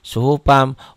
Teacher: Jadi dibacanya suhufa. Suhufa masukin ke mim. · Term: idgham biguna